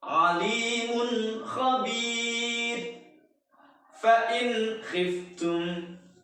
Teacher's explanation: Kita jangan mendengungkan huruf nun sukun atau tanwinnya. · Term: idhar halqi